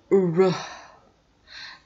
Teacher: your tongue is rolling in a very rapid intermittent closure. It's roll, it flap up to the positions of alveolar ridge.